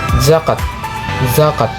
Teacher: Pengucapan. Posisi seperti S tetapi dengan getaran pita suara dan hembusan udara membuat gesekan bersuara.